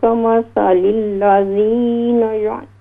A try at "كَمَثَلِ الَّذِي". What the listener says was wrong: یہ دوبارہ پڑھیں کمثل الذی لذین نہیں ہے یہاں پر کمثل الذی